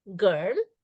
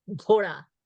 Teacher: unaspirated like girl as opposed to G aspirated when you say Gora so goru unaspirated Gora aspirated so let's let us first write